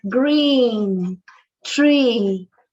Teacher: this is the corresponding for the letter i but the sound is e e it's long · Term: long e